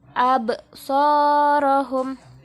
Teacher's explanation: abnya ini bacaan qalqalah atau dipantulkan bacanya.